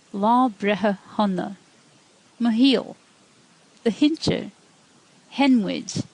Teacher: When you apply shevu to the letter S, whether in broad or slender consonants, you get an H sound.